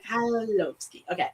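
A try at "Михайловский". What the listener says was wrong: No, skip the K and just pronounce the H and you'll get Mikhailovsky.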